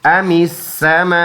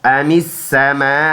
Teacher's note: اس لفظ کی جوڑ ہے میم الف مد زبر ما. 4 الف کی مقدار اس کو ہم نے لمبا ادا کرنا ہے